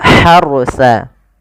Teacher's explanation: Ini ha di sini ha kecil, jangan dibaca dengan ha besar, jangan tasqil harsa, tapi dia harusa. Huruf ha yang kecil itu dikeluarkan dari tenggorokan tengah tengah tenggorokan